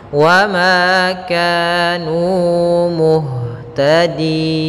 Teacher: Kemudian nu ada dhammah bertemu waw yaitu mad tabi'i kembali. Maka panjangnya ma, ka dan nu harus sama 2 harakat.